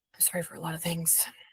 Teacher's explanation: there was like a breathy tone to it